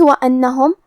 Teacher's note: حرف النون کو ہمیں 2 حرف کے برابر پڑھنا ہے کیونکہ اس پہ تشدید ہے